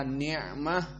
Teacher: kedua Min Nikmah dan Adapun makhraj Ain maka Nikmah dia adalah makhrajnya makhraj alhalq dan dia adalah wusto dari alhalq di halq Yang pertengahan